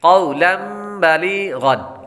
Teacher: आगे बा के बाद लाम, लाम के बाद या हुरूफ़ मद्दा है, इसलिए इसको एक अलिफ यानी 2 हरकत के बराबर लंबा करके पढ़ेंगे। या के बाद गैन हुरूफ़ मुस्तालिया में से है, इसलिए इसको पुर पढ़ेंगे।